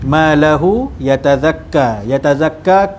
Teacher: ka kat belakang tu adalah ma asli, bacaan panjang dua harakat.